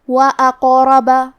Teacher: زکاة وأقرب، کلمت اقرب میں قاف پہ جزم ہے، تو کیونکہ قاف بھی حروف القلقلہ میں سے ہے تو ہم یہ حرف کو ہلاتے ہوئے یہ کلمہ کو پڑھیں گے وأقرب. قاف کو اور اس کے بعد حرف را کو دونوں کو تفخیم سے مطلب موٹی آواز میں پڑھیں گے. آخر میں با پہ زبر ہے تو ہمیں زبر کو ظاہر کرنا ہے.